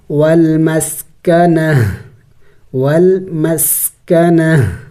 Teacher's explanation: وقف میں اس گولتا کو ہا سے بدلانا ہوتا ہے